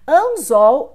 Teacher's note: Anzol, mais uma vez, você tem aqui o símbolo W, indicando aqui a semivogal, OL. Então, de anzol, você tinha o L, que foi modificado por U. Então, aqui nós temos a vocalização.